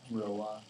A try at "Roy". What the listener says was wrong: Yeah, I know, but you pronounced it Wah. It's French.